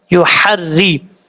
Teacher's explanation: را کے نیچے زیر ہے، را بریک پڑھا جائے گا، یحری، یا کے بعد ہا بریک ہے، اس کو کلیئر ساؤنڈ کر کے پڑھنا ہے، یحر، حر، اس کو یو ہر دے نہیں پڑھنا، غلط ہو جائے گا، مسٹیک ہو جائے گی، آپ نے اس چیز سے بچنا ہے.